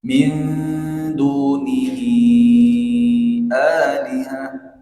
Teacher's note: min itu kan dengung juga ya, jadi cukup panjang juga.